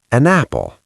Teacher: The n moves to the apple.